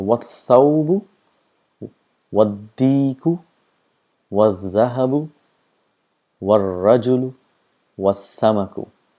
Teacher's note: the sound of alif is also not produced